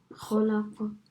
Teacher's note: you know the echo sound, don't do it too much so it sounds like you're saying a fatha. So it shouldn't sound like you're saying khalaqa.